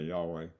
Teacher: I'm going to say Yahweh with the accent on the last syllable.